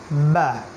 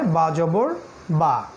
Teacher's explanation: ঠোঁটের ভিতরের যে পার্ট এই ভিতরের পার্ট থেকে উচ্চারণ করতে হয়